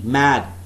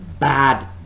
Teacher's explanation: So we could substitute the initial bilabial nasal M with the bilabial plosive B. B is also bilabial, but that is a plosive sound.